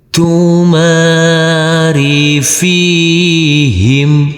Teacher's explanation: Huruf mim yang berfathah ain ini bertemu dengan huruf alif yang tidak berharakat, kita baca panjang dengan panjang dua harakat. Huruf fa yang berkasrah ini bertemu dengan huruf ya sukun, kita baca panjang dengan panjang dua harakat. Huruf mim sukun cara bacanya sama dengan huruf m.